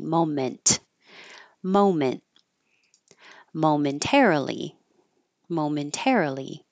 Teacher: you hold your tongue in that position without releasing the T